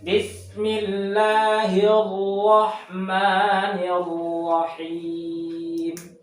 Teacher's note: takrir itu getarannya usahakan, apalagi tasdid, jangan terlalu terlihat atau ketara